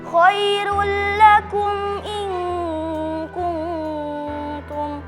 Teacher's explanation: Terdapat dalam kata khairul lakum in kuntum karena ada mim sukun bertemu dengan huruf hamzah, dibaca jelas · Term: izhar syafawi